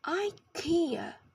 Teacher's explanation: we all know and love IA in the US it is pronounced Ika with the stress in the second syllable